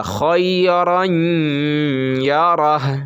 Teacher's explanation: اصل میں ہے یرہو، چونکہ یہاں پہ ہم وقف کر رہے ہیں تو اس لیے یرہو سے یرہ ہو جائے گا